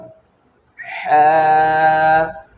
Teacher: حلق کے بیچ کے حصے سے ح ادا ہوتا ہے